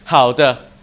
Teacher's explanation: Sometimes you hear the light tone, there's like no tone at all. It's just there.